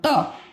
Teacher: त जब बोलते हो तो किसको टच कर रही है दांत को